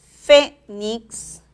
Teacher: fénix lleva la mayor fuerza de voz en la primera sílaba